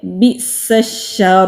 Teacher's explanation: با ساکن پر اگر ہم رکیں گے تو با پر کلکلا ہوگا، اگر نہیں رکیں گے تو اسی طرح سے پڑھا جائے گا۔